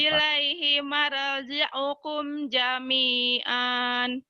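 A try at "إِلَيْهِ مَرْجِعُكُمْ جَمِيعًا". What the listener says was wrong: Jangan ada yang ditahan, dilepas, disentak aja latihannya bila perlu. Ilaihi marnya tadi jangan jangan ditahan, ya, dilepas. Ilaihi marji'ukum, komnya juga idhar. Jami'an.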